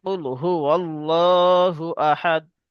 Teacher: যেহেতু আহাদের কাছে আমরা থেমে যাচ্ছি, তাই এটা আহাদুন না বলে আহাদ বলি